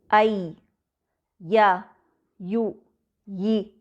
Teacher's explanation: या गैर मद के लिए जबान निस्बत नीचे रहती है और उसकी आवाज मुंह से फैल कर निकलती है